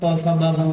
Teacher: अब व से प फ ब भ म। व से मतलब जब भी आप प फ ब भ म बोलेंगे तो दोनों होंठ आपस में टकराएंगे।